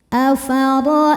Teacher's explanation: huruf lin karena ada ya sukun sebelumnya fathah maka dibacanya lembut